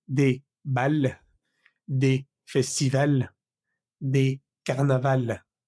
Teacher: al final pues no va a sonar esa S que se le agrega